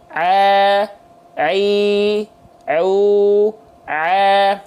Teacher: bunyinya gini a i u jadi suaranya sengau itu enggak boleh Ain harus dilafalkan dari tengah tenggorokan ke rongga mulut